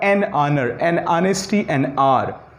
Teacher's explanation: इसमें ये H silent हो जाता है, तो इसका जो साउंड होगा वो ओ से, यानी वॉवेल से स्टार्ट होगा